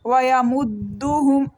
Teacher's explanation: دال کو 1 سیکنڈ کے لیے رک کے پڑھیں گے اور پریس کر کے پڑھیں گے اس کو